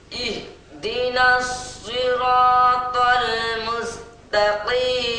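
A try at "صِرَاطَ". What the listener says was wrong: তো আরেকটু মোটা হবে, সিরাতাল সুন্দর হবে, আরো একটু মোটা হলে।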